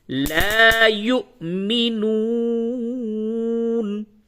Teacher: اور یہ جو دوسرا واو ہے اس پہ جزم ہے، یہ واو مدہ ہے، اس کو کھینچ کر کے پڑھیں گے. تو پہلا واو جھٹکے کے ساتھ اور دوسرا واو کھینچ کر کے دراز کر کے پڑھیں گے